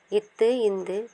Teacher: மேல்வாய் பல்லின் நுனியை நாக்கின் நுனி தொடுவதால் பிறக்கின்றது